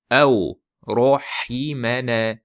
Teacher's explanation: Vovni v qilib qo'ymaslik kerak. Yumshoq.